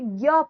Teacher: ज्ञ कंठ से शुरू होकर तालु पर खत्म होगा क्योंकि य का उच्चारण स्थान तालु है। तो कंठ तालु हो गया।